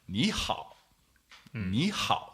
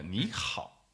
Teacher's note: So I guess the most common problem with this is that people don't go high enough. So make sure you go 你, go all the way up to first tone level.